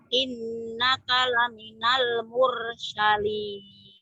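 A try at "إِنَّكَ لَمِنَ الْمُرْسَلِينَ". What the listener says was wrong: Sinnya kecil. Bacanya sudah bagus, cuman kurang tenang. Kalaminal mursalin. Sin biasa.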